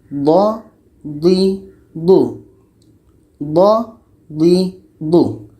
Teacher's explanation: D ini letaknya pada salah satu tepi lidah atau keduanya bertemu dengan gigi geraham atas.